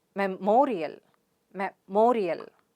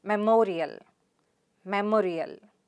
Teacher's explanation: The stress is on ma sound there.